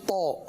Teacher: زبان کی نوک اور دانتوں کی جڑ سے ادا ہونے والا